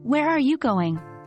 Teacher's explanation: falling intonation typically found in statements or wh questions